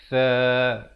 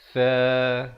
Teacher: Huruf tha di hujung lidah ini kita keluarkan di antara 2 gigi.